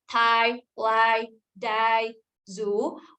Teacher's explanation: we place tip of the tongue, or the blade of the tongue on alveolar ridge for the first sound in each of these words.